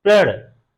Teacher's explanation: लेकिन यहाँ क्या है, यहाँ जो अर्ध व्यंजन है इसके ऊपर हम लोग समय ही नहीं दे रहे हैं, रुक नहीं रहे हैं। प जैसे ओठ सट रहे हैं प के लिए, प ध्वनि पूरी भी नहीं हो रही है, उसके साथ ही र का उच्चारण प्रारंभ हो जा रहा है। हम लोग प्रण और र पे ज्यादा समय दे रहे हैं, रुक रहे हैं।